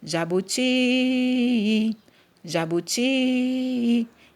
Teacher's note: na palavra jabuti, a sílaba tônica é a última, né? O ti é a última sílaba. · a sílaba ti é a que é a pronunciada com mais força, ou seja, é a sílaba tônica